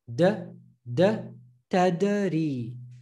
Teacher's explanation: when they have sukoon, they will be pronounced with a jerk sound.